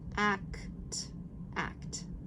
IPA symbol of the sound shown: æ